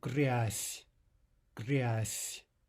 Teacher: from a soft Z to a soft S